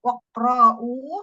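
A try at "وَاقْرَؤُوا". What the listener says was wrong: Rohnya pendek ya, wakor.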